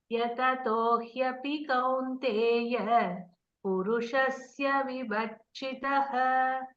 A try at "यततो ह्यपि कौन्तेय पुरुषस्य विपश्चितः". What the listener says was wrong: No, you are telling vibhakshitah. No, it is paschati. Paschati in Sanskrit is seeing. Vipashchitah. Not ba. Not you are pronouncing as ba. Vipashchitah.